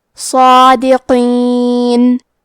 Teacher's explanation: کلمت صادقین میں حرف الصاد ہے. صاد حروف التفخیم میں سے ہے، تو ہم یہ حرف کو موٹی آواز میں پڑھیں گے. کیونکہ اس پہ کھڑا زبر ہے تو یہاں مد الف ہے.